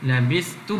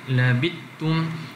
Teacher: Maka Abu Ja'far membaca dengan idgham pada labistu, baca dengan labittu, labistum baca dengan labittum, uztu baca dengan uttu.